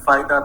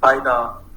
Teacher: In Iranian languages, there is a tendency to replace this f with p.